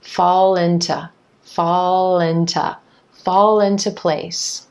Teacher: So again, that dark L linking over in front of the vowel I and into, fall into, making the word sound like linto, linto, except listen again, the word into is becoming into, into. That to is reducing down to ta.